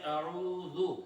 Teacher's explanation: صحیح تبھی ہوگا جب ہمارے پڑھتے وقت ہونٹ گول ہو جائے